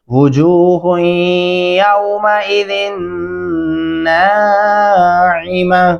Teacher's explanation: गुन्ना करेंगे हार या पे और जाल को नून के साथ मिलाते हैं, गुन्ना भी करेंगे, फिर नून को लंबा भी करेंगे और आइन गले से अदा करेंगे